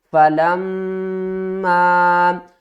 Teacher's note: یہاں سے ہم شروع کرتے ہیں فَلَمَّا، یہ دیکھیں آپ نے ایک بات کا خیال رکھنا ہے، ہر ویڈیو میں بھی میں آپ کو بتاتا ہوں کہ اپنے ذہن میں ایک بات کو رکھنا ہے کہ میم مشدد پر ہمیشہ غنہ ہوگا، اور میم جو مشدد ہے اس کو سختی کے ساتھ پڑھیں گے لیکن غنہ بھی ساتھ میں کریں گے